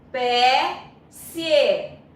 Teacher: o E, ele é pronunciado com som mais forte, logo ele é vogal, e o I, semivogal, ficou na mesma sílaba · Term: ditongo